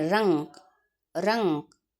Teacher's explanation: जो र पर बिंदु लगा है उसका जो दबाव है वो नाक से आ रहा है। तो इसीलिए अनुस्वार ध्वनियों को भी नासिक की ध्वनि कहा गया है।